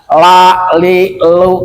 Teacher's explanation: Lam adalah ujung lidah dengan langit-langit yang atas.